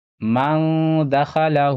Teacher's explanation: بھی اخفا ہوگا، من دخلہ، ہا کے اوپر الٹا پیش ہے، الٹا پیش تھوڑا کھینچ کر پڑھا جاتا ہے واو مدہ کی جیسا